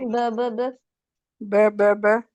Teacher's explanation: होठों से होठ अलग हो जाएंगे तो बा अदा हो जाएगी।